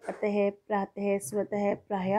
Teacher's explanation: जो विसर्ग है इसकी जो ध्वनि होती है वो ह के रूप में निकलती है